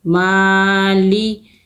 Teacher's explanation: میم کھڑی زبر ما، لام سیرلی مالی، ماں کو ہم کھینچیں گے، کھڑی زبر ہے، 2 حرکت کھینچ کے پڑھیں گے